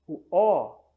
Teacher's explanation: produzir um som anterior nós fazemos um som posterior o o nós sentimos que o o é produzido um pouco atrás do a